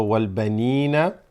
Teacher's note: The ya extends the noon, so wal banina. Wal, this hamzatul wasl is going to drop, going to go straight to the lam here.